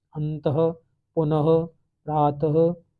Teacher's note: इनका उच्चारण हल्के ह के समान होता है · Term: विसर्ग